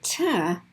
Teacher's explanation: the ta is actually closer to the front of your mouth